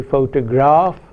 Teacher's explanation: If we say photograph, the graph is stressed, we hear a full vowel ah.